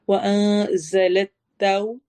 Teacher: तौ होंठ गोल होंगे, वाव अदा कर रहे हैं। रॉ को मोटा पढ़ना है।